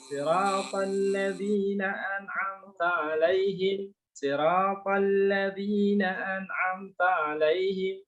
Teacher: Jadi huruf to-nya tidak keluar udara.